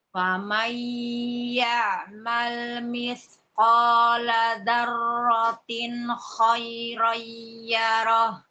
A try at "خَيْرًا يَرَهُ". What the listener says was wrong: Idgham bi gunnahnya, Ibu. خيرا يره.